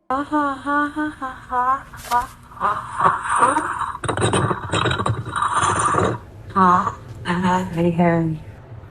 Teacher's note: Alexa repeats the word back in a small voice that quickly sounds breathy and scary with gasping noises and a strange sentence at the end that kind of sounds like, I'm at the end.